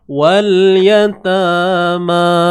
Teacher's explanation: Ta dengan ma ni dua-dua mat asli dibaca dengan dua harakat.